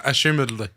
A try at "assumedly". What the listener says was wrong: Assumedly. Yeah, assumedly. You said assumedla,